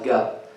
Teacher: Egyptian slang, particularly in Cairo, they make the Jeem as ga, right? They make Jeem as ga.